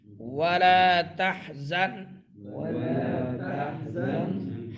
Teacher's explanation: ہا درمیان حلق سے.